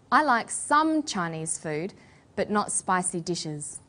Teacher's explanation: we put the stress on the word some